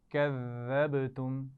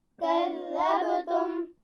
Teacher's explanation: ذال پہ شد ہے لیکن سیٹی کی آواز نہیں آنی چاہیے